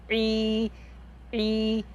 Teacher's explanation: عین کھڑی زیر ای، حلق کو بند کر کے پڑھیں